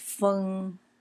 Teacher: that's a hummingbird pronounced fung in the first tone